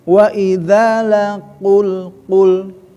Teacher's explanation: Jadi si qaf itu huruf lidah. Tapi di ujung, dekat tenggorokan gitu kan. · Jadi pastikan si qaf terangkat, ya angkat ku.